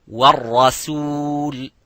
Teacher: So the ra is mufakham, as you can see, but the sin is muraqqaq.